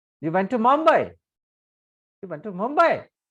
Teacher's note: i am giving the stress on the last word and it is the rising intonation · मी ज्यावेळेस असं वाक्य वाचतो पहा, यू वेंट टू मुंबई, मुंबईवरती जोर देतो, याचा अर्थ प्रश्नचिन्ह द्यावं लागेल मला, because I am giving the stress on the last word and it is the rising intonation.